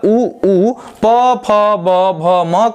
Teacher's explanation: उ प फ ब भ म का उच्चारण होठ से होता है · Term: ओष्ठ वर्ण